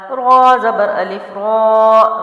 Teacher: را کے اوپر زبر ہے تو میں نے اس کو موٹا پڑھا ہے